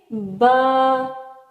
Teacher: تو دونوں ہونٹوں کے تر حصہ سے با ادا ہوتا ہے